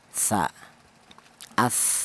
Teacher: Kalau disukunkan ada nafas atau angin yang keluar dari mulut as seperti itu. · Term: hames, hamas